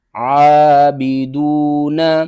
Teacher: زیر بی، عابی، دال واو پیش دو، عابدو، نون زبرنا، عابدون، عین کو آپ نے حلق کے درمیان والے حصے سے ادا کرنا ہے ، اور دال کے بعد دیکھیں واو ہے، واو حروف مدہ